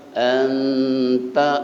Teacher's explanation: ini ikhfa aqrab karena nun ketemu dengan ta